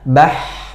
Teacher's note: kalau dia sukun bah, maka akhirannya itu bukan suara tapi nafas yang keluar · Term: huruf ha